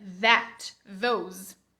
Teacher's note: o som do TH, que é a língua entre os dentes, porém com voz